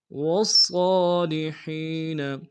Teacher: صاد کو موٹا ادا کریں گے، صاد کے اوپر کھڑا زبر ایک انداز میں کھینچیں گے. ہاں کو یا کے سامنے آئیں گے، یا مد ایک انداز میں کھینچیں گے.